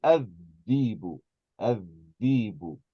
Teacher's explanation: they would say adhibu, adhibu, and they would just completely drop this hamza.